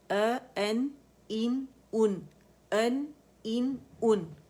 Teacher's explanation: حمزہ کی آواز اقص الحلق سے آئے گی.